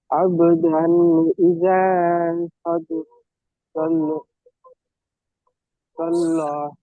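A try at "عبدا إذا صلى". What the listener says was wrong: জি আবদান ইদা, এখানে গুণা হবে না, হবে না বলুন তো । জি, তানবিনের পরে হামজা এসছে, গুণা হবে না, হবে না? জি না, গুণা হবে না। জি, গুণা হবে না এখানে।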